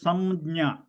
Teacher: after s my lips touch each other because the anusara there is pronounced as almost like a Makara